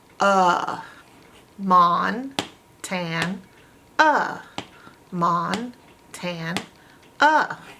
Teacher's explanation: but the a is open and it's making a schwa sound